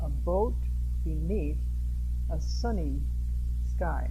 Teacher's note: A boat, not but a boat. Beneath, that word has a stress on the second syllable.